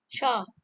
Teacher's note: तो ये आपका तालव्य से बोला जाता है, छ बोल के देख लीजिएगा आप लोग, तालव्य, B is the right answer.